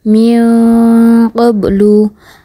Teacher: harus dibaca samar dan didengungkan dua harakat · harus dibaca samar dan didengungkan 2 harokat. Contohnya, ada nun sukun bertemu dengan huruf qaf, maka dibacanya min qablu, disamarkan dan didengungkan terlebih dahulu. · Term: ikhfa